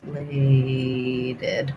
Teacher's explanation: Secondary stress on lated, I would say.